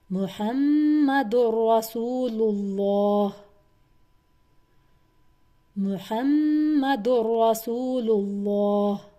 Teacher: یہاں پر میم مشدد تھا، میں نے ہا سے پچھلے حرف سے جوڑا میم کو اور 2 کاؤنٹ کا غنہ کیا